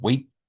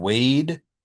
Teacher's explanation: we have long vowels when we have a voiced ending. So if you think about the difference between the word wait and wade, yeah, one ends with a T and one ends with a D, but it's hard to hear those because you're ending your word there.